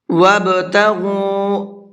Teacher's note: با حروف قلقلہ میں سے ہے اور اس کے اوپر جزم بھی ہے